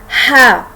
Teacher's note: अगर हम गले के 3 पार्ट करें, जो सेंटर का पार्ट है गले का, वहाँ से ये वाला हा अदा होता है